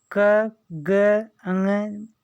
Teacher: उच्चारण में श्वास पूर्व से अल्प मात्रा में निकलते हैं, जिनमें हकार जैसी ध्वनि नहीं होती, उन्हें हम अल्प प्राण कहते हैं